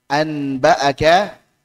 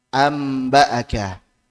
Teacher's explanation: nun sukun atau tanwin saat bertemu dengan huruf ba maka Ubahlah menjadi huruf mim yang tadinya misalkan anbaaka maka menjadi ambaaka an menjadi am yang · An menjadi am. Yang tadinya nun diubah menjadi mim. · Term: iklab, iqlab